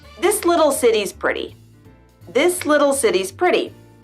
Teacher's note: When a T comes in between vowel sounds, it sounds more like a D. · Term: flap T